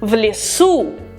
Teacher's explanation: But in the forest, les. The stressed syllable would be the last, в лесу. We cannot say в лесе, в лесу.